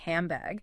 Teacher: It assimilates into an M sound because your lips are naturally preparing for the B in bag. It sounds like handbag.